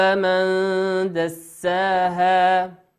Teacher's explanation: وقوله عز وجل من دساها كأن النون أخفيت نون ساكنة أتى بعدها حرف الدال والدال من حروف الإخفاء